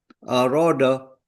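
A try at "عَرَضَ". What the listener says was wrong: Ainnya coba tekan lagi Pak di belakang. A.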